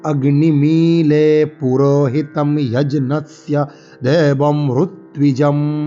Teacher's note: ঋগ্বেদে রিয়ের উচ্চারণ রু হয়